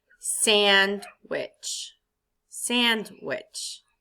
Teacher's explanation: the accent goes on sand not which